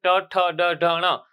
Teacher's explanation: તમારી જીભ છે એ મૂર્ધા આગળ અડશે એટલે એને મૂર્ધન્ય વ્યંજન કહેવાય.